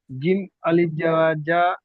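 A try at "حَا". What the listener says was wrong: না, এটা জিম নয়, এটা হা, এটা হা। হা, হা সাবার হা।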